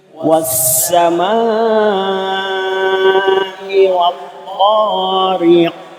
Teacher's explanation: Was sama niku wonten alisipun rembet panjang sekawan dumugi gangsal